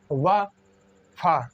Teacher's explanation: तो 44 में देखते हैं, दंतोष्ठ ध्वनियाँ हैं, दंत और ओष्ठ, यानी कि दांत और ओंठ दोनों का प्रयोग होता है, उनको दंतोष्ठ ध्वनियाँ कहते हैं।